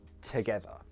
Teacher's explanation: if a word begins with a t sound, like the word together, you don't make that t glottal